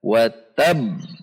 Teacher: karena ada tasydid, tidak boleh dibaca qalqalah secara langsung, namun terjeda sekira 1 ketuk. Perhatikan, watabba dibaca menjadi watab.